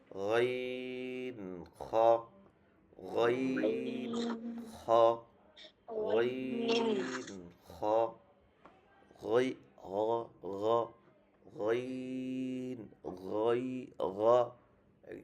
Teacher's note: অর্থাৎ এই যে একদম আমাদের জিহ্বার গোড়ার দিকে যে জায়গাটা কণ্ঠে, সেটা হচ্ছে হলকের শেষ, আর সেটাকে বলা হয় হলকের শেষ। হলকের শেষ থেকে উচ্চারিত হয় গইন খ